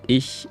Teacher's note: when you say ich, then the tongue is kind of more in the front, I would say, and more up in the middle.